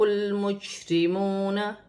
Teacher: را پر زبر کی حرکت ہے، فا کو لام کے ساتھ ملا کر پڑھا جائے گا، لام ساکن ہے، جیم بھی ساکن ہے، جیم کو میم کے ساتھ ملا کر پڑھا جائے گا، را باریک پڑھی جائے گی کیونکہ را کے نیچے زیر کی حرکت ہے۔ واو ساکن سے پہلے پیش ہے تو واو مدہ بن رہی ہے، اسے ایک الف کی مقدار کھینچ کر پڑھا جائے گا۔